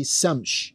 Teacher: The word shams, another Quranic word, the word shams, which has SH in it and it has S in it, shams. These could be flipped around, and some Arabic-speaking populations would pronounce it Samsh. You will find this still being used in certain populations in North Africa, where instead of saying Shams, they say Samsh.